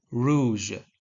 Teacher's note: Uvular sounds, common in some languages, such as the French r in rouge.